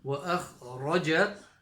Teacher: kha from the top of the throat and a full mouth letter.